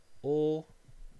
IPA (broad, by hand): oː